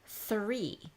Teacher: three has an unvoiced th sound that sound just kind of Pops off your tongue and the that's over with you don't even use your voice